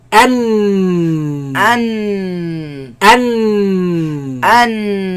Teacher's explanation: And in the sides closed, the sound goes back and comes from the nose. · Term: Noon